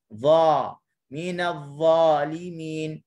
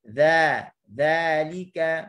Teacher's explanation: Dha, minadh-dhalimin, huruf dha tebal. Tapi huruf dzal dia akan jadi nipis bila pangkal lidah terletak.